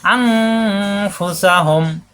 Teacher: নুন সাকিনের পরে ফা ইকফা গুন্না হবে